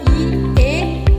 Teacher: vokal yang diucapkan dengan bentuk bibir tidak bulat atau terbentang lebar